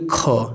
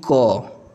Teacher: यह जब दोनों बोलेंगे तो आपके मुख से क्या है कि हवा ज्यादा निकल रही है तो ज्यादा निकलेगी तो महाप्राण लेकिन जब कम निकलेगा तो अल्प प्राण